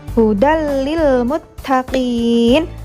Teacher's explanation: ada fathah tanwin bertemu dengan huruf lam, maka tanwin dimasukkan ke dalam huruf lam tanpa disertai dengan dengung. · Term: idgham bila gunnah